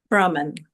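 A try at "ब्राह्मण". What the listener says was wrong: Well, there's an H there,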